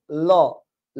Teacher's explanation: দেখেন, ল আপনি যখন ল উচ্চারণ করবেন, এই যে দেখেন ল, ল উচ্চারণ করার সময় জিহ্বার উপরের থেকে দ্রুত গতিতে নিচের দিকে ধাবিত হয় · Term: পার্ষিক বর্ণ, পার্শ্বিক ধ্বনি